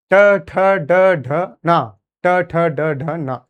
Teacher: ट वर्ग जो है वह मूर्धन्य से इस्तेमाल होते हैं